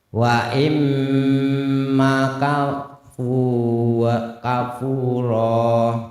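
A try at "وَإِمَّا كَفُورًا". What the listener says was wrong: Banyak dipanjangkan maka.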